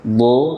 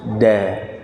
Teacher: Kalau do diangkat pangkal lidah, sedangkan dal semuanya datar kecuali ujung lidah